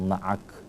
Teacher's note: karena waqaf kita wakafkan huruf kafnya, kita sukunkan di situ